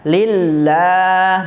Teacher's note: lamjalah kembali ya tarokik dibaca tipis · lam yang kedua itu terdapat hukum Mad Thobi'i la panjang selama 2 harokat tidak boleh lebih